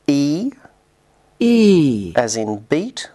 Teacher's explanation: as in beat which is high front unrounded and tense